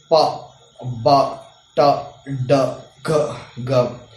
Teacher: So here we already in places of articulation we saw this bilabial, alveolar, velar. So in plosives, oral stop, we are having three types of articulation. One is bilabial, alveolar and velar. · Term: plosive sounds